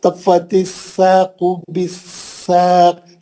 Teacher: नहीं, सौक नहीं, सीन पतला है। तफ़्फ़तिस साक़ बिस्साक़, सिटी मारेंगे, पतला पढ़ेंगे।